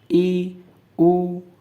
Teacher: सवत का अर्थ है मु लगभग आधा बंद रहता है ठीक ओ बोल के देखिए आधा खुला रहेगा आधा बंद रहेगा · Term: अर्ध सवत